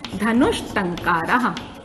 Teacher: लेकिन क्योंकि इसमें एक व्यंजन संधि का सूत्र हम पढ़ चुके हैं पहले, इष्टुना इष्टुः, ये सूत्र जो है ट वर्ग के रहते दंत सा को मूर्धन्य सा कर देता है, तो हमारा जो रूप बनता है वो बन जाता है धनुष टंकारः, ये रूप बन जाता है।